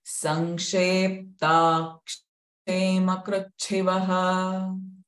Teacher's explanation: So cha is a mahaprana sound. So have that force, feel that force in your chest.